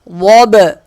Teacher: واد با زبر ضب، واد موٹا ہوگا، با پہ قلقلہ ہوگا. ضب.